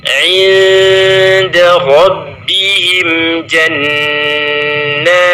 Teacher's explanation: nun sukun ketemu huruf dal, maka di situ muncul bacaan ikhfa hakiki, yaitu sehingga kita membacanya dengung yang samar menuju ke huruf dal